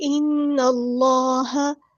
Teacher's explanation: یہاں پہ دیکھیں، ان اللہ، اللہ کا نام آیا ہے تو اللہ کے نام کے اندر جو لام ہے اس کو پور یعنی ہیوی ادا کریں گے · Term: تفخیم